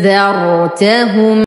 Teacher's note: الأولى من أدنى الحلق الثانية مسهلة من الفم أجمع بين الهمزتين فتصبحان بشكل سريع.